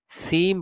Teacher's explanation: সি বলে লম্বা করে শেষে মিম পড়ে দিব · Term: মিমের গুন্নাটা